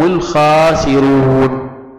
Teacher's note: الخاء يجب الاعتناء بإظهارها، والواو فيه مد طبيعي